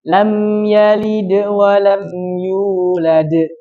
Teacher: dal ada di huruf qalqalah, maka dia harus dipantulkan.